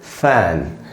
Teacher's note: ऊपर के दांत नीचे के होठों पे ज़रा सा लगाना है और हवा का झोंका बाहर निकलना चाहिए।